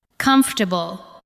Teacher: Do not give every syllable the same weight. Let the first part carry the stress.